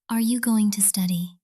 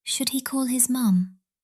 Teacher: Don't forget to use rising intonation.